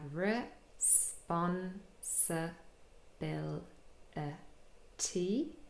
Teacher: But we also have secondary stress on the 2nd syllable, spun, responsibility. So quite a lot of unstressed syllables, re, se, and t, all containing the short I sound. And then the almost last syllable has a schwa, responsibility.